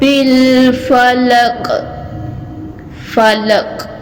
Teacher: قاف کو جو ہے ہلا کے تھوڑا سا پڑھنا ہے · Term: قلقلہ